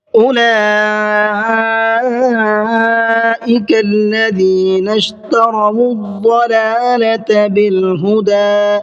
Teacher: اولئک کے اندر بڑا مد ہے جس کو مد متصل کہا جاتا ہے، اور اس کو 4 سے 5 الف کے برابر کھینچ کر کے پڑھا جاتا ہے